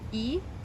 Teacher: in modern greek it undergoes iotization which is something we'll talk about a lot and it means it starts to sound like an iota so it makes an i sound e so we've got we've